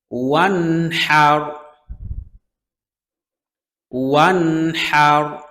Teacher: হা কণ্ঠনালীর মধ্যখান থেকে উচ্চারণ হয় হা এবং আইন